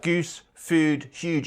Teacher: It also exhibits quite extreme goose fronting, whereby the U vowel in words like goose, food, huge and view is pronounced quite far forward in the mouth